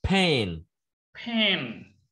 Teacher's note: Chữ N hơi ở mũi ra một chút